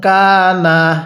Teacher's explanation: নুন সাকিনের পরে কাফটি হলো ইকফার হরফ এজন্য নুন সাকিনটি গুন্নাহ করে পড়তে হবে